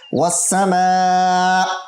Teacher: وسا میم الف مد زبر ما 5 الف کی مقدار لمبا ہوگا